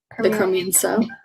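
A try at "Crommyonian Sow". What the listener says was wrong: no i'm sorry it's the chrome yoni and sal uh we were missing a syllable there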